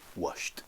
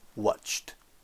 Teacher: la forme en ED, puisque c'est chuchoté, on va juste rajouter T. Donc, wash plus T, ça fait washed.